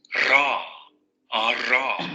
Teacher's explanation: el alveolar vibrante múltiple sonoro. Es nuestra R múltiple. Ra, ra. Vean cómo este fonema no se parece en nada a la pronunciación del inglés.